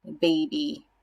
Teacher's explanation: let's think about the word baby right there we've got our first syllable that's accented